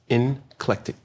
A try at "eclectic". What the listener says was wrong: There's no N in it.